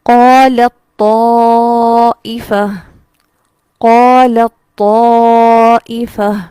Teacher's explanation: قالت کا لام ڈائریکٹ یہاں ہم اس کو طا سے ملائیں گے، تا یہاں پر نہیں پڑھی جائے گی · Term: ادغام